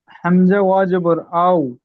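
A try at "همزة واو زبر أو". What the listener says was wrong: এ অ গুলো, অ বলছেন, অ হবে না। আলিফ থেকে এ পর্যন্ত যে পড়েছিলাম, ও 3 আলিফ টান দিয়ে, তো ও বলতে হবে। অ বললে হবে না, ভুল হবে। হামসা ও জাবার আও, পরিষ্কার।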